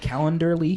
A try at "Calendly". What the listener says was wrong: No, there's no E and R in it. So it's calendly.com/day1app. So calendly.com.